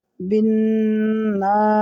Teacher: হরকতের বামে নুনে তাসদিদ ওয়াজিব গুন্না এক আলিফ গুন্না করতে হবে